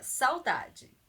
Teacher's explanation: de ditongo ou tritongo acontece quando na palavra existe uma vogal Então são uma vogal e uma semivogal elas estão juntas na palavra